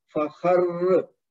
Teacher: را کی جو تشدید رہے گی اور زبر گر جائے گی رکنے کی صورت میں تو را کو زور دے کے پڑھیں گے